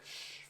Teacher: your tongue is touching the top of your mouth um in the center